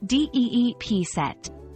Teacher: the pronunciation of deep set is straightforward with emphasis on the first syllable